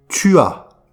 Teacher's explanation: On ne prononce pas le S.